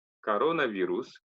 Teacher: Пишется коронавирус, а читается как раз коронавирус, потому что корона на вторую О падает ударение, поэтому читается как О, остальное как А.